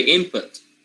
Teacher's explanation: Even though the spelling is with N, the pronunciation changes into M, input, because of the next sound. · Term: homorganic rule